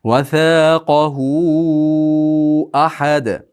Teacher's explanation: Sabab undan keyin hamza kelyapti. Ahad deb turib dalda qalqalasi bilan to'xtaymiz.